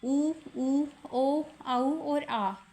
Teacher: वृत्ताकार स्वर है। होठों की आकृति गोल होती है। तो उसके आधार पर वृत्ताकार स्वर हैं।